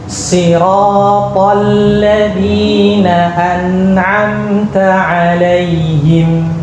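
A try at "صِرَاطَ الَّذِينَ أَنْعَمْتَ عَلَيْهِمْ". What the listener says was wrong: Bagus, barakallahu.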